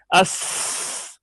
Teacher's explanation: सीन में रिखावत है आवाज जारी होगी